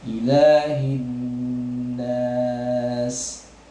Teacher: Jadi pada sahabat Ummah untuk kedepannya ya dibaca dengan kosor 2 harokat ya, ilahin nas ya, panjang huruf lamnya sebanyak 2 harokat.